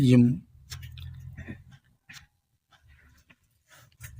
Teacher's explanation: மேல் உதடும் கீழ் உதடும் பொருந்துவதால் ஏற்படுவது